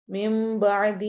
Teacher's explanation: ناکم من بعدی، کم من بعدی میم پر غنہ کریں گے، من بعدی میں نون کی جگہ میم پڑھا جائے گا